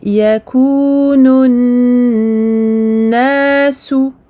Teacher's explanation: je reste beaucoup plus longtemps que pour les autres shadda sur ce noun, car on a ce qu'on appelle une runna akmal ma takun, runna très longue sur ce noun mushaddad.